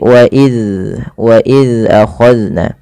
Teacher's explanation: Zal yaitu ujung lidahnya menempel dengan gigi seri atas. Maka dan huruf zal tidak boleh terpantulkan, tidak boleh wa iz ya.